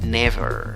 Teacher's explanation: Con B chica, por favor, dentilabial.